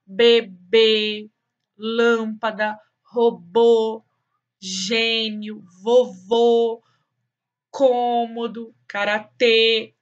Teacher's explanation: a gente deixa o sonzinho das vogais mais fechadinho diferente dos agudos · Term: acento circunflexo